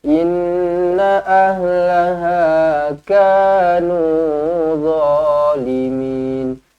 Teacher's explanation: Inna nun sabdu wajibul gunnah dengan 2 harakat.